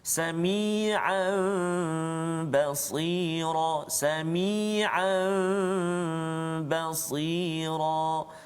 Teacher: Jadi bacaan dia tu ba tu tukar kepada mim, dengung dengan kadar dua harakat. Dua harakat saja. · apabila nun sakinah atau tanwin bertemu dengan huruf iqlab, iaitu ba, satu saja huruf iqlab, ba, maka hendaklah diiqlabkan, yakni ditukarkan kepada mim. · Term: hukum iqlab